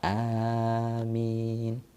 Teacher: Bacaan amin, a panjang, mi juga panjang ya. A-nya panjang, min artinya kabulkan doa kami.